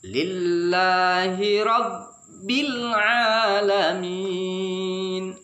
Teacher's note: Oleh sebab itu kita membacanya dengan menjelaskan lam. Lam itu ujung lidah menyentuh langit-langit bagian atas depannya.